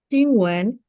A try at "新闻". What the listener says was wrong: kebalik. Cingwen. Nadanya kebalik. Cingwen.